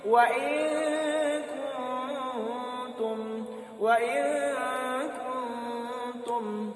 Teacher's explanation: Ya, ingat lagi bahwa ikhfa hakiki ini adalah samar-samar, ya. Huruf nunnya antara ada dan tiada.